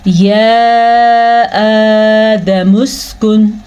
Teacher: وَقُلْنَا، نون زبر الف نا، یا آدم اسکن، یہ جو مد آپ کو نظر آ رہی ہے یہ والی مد 3 حرکات عربیہ کے برابر ہے، تقریباً 2 سے 3 سیکنڈ تک لمبی کی جانے والی مد ہے